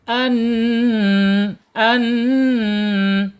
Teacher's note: masih tawas karena ee nun ini termasuk huruf-huruf tawas ya antara ee asyiddah ya tertahan suara dan mengalir ya antara tertahan dan mengalir nun ini jadi bainiah ada di tengah-tengah kemudian an an ya penekanan di huruf nun yang bertasjid ya ini bacaannya bacaan gunah Ya, bacaan gunah ditahan 2 sampai 3 harakat.